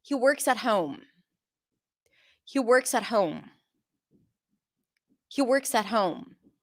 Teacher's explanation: So works and home are the content words, and they are the words that are going to be stressed.